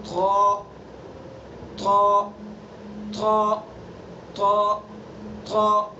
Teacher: بس طا کو کیا کرنا ہے، ہمیں پر کرنا ہے، منہ بھر کے پڑھنا ہے. حصہ ہے کہ زبان کی نوک ثنا علیا کی جڑ پر لگائیں گے اور پچھلا حصہ پر کرنے کے لیے منہ بھر کے